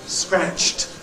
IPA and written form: skræʧt (scratched)